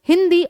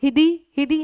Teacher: आप अनुस्वार का प्रयोग करोगे तो नासिका से वायु जरूर निकलेगी।